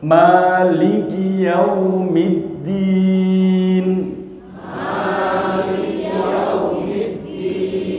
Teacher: Kalau Bapak Ibu belajar Fatihah sama saya, maknya panjang.